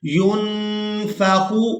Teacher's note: یہاں نون ساکن پر اخفا کریں گے، آواز کو ناک میں چھپا کر ادا کریں گے.